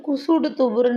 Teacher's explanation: சொல்லுக்கு இறுதியில் வல்லின மெய்கள் ஏறிய உகரம் அதாவது குசுடு துபுறுன்னு நம்ம சொல்லுவோம் இது தன்னுடைய மாத்திரை அரை மாத்திரையிலிருந்து குறைஞ்சு ஒலிக்குதாம் அப்படி குறைஞ்சு ஒலிக்கிறதை தான் குற்றிய லுகரம்னு சொல்றோம் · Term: குற்றியல் உகரம்